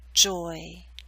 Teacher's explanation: you're moving more towards e at the end so you're pulling your lips outward not into a full spread e but close